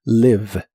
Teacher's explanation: La I de esta palabra se pronuncia de manera muy corta y suena ligeramente como E, live. La V o V chica, como la conozcas, es labio dental y vibrante en inglés.